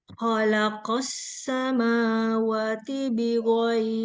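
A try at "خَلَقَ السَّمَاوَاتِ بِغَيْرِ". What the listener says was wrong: Wati panjang-panjang. Makhraj ghain ini di ujung tenggorokan. Jadi bukan kayak G, bukan kayak G kita orang Indonesia misalkan mau bilang apa Garuda, Gaga, nggak gitu dia. Ghain ini dia agak lunak ya, Mbak.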